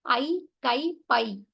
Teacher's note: ஐ என்ற எழுத்து வந்து தனித்து வர்ற இடங்கள்ல அது ரெண்டு மாத்திரை அளவுல முழுமையாக ஒலிக்கிறது அப்படின்னு சொல்றாங்க அது ரெண்டு மாத்திரை அளவுதான் அது ஐ கை பை எல்லாம்